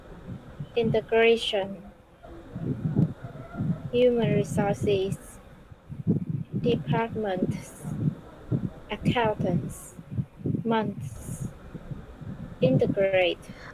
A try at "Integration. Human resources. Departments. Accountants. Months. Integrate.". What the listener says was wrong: Okay, so you got it correct. Just don't forget on how to pronounce it correctly.